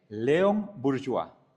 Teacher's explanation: Sí, la e no suena ni tampoco la s. Y el diptongo o i se pronuncia wa